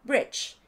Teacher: se parece más a una e española que a una I